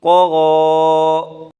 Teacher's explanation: دونوں کو پر پڑھیں گے، طا کو بھی پر پڑھیں گے، غین کو بھی پر پڑھیں گے